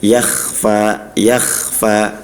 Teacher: ketika kho-nya ini sukun ya, seperti yakhfa ya. Nah itu harus dialirkan secara nafas dan suaranya. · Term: huruf kho